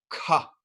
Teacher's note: the second letter is kah with an aspiration